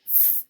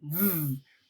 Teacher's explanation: are my and then we have sounds like f and V which are similar sounds and my mouth is doing the same thing but we put our hand on our throat to feel the vibration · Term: voiced and unvoiced sounds